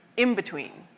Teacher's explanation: Say in between quickly. For many of us, that N in between will also start to sound more like an M.